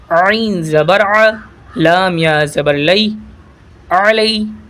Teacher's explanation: یہ عین کو حلق سے ادا کریے گا